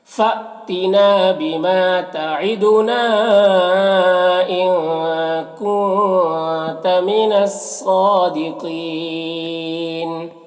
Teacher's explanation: مستعلیہ میں سے ہے اور یہاں پر یا مدہ ہے، اور یہ وقفی کی صورت میں نون کا زبر سکون سے بدل جائے گا تو مد عارض وقفی ہوگا · یہاں پر حمزہ ساکنہ ہے، جھٹکا لگے گا ، نا میں الف مدہ ہے، ماں میں بھی الف مدہ